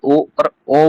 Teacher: ओ और ओ का उच्चारण स्थान कंठ ओष्ठ है। कंठ और ओष्ठ यानी कि कंठ माने गला और ओष्ठ माने होठ। · हम जब ओ और ओ बोलते हैं ना, तो हमें कंठ का और ओष्ठ का ही यूज करना पड़ता है